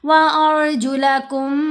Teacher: गुन्ना 2 हरकात की मिकदार आवाज़ को लंबा करना है नाक में पढ़ते हुए।